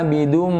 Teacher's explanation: mim ini adalah makhraj yang keluar dari dua bibir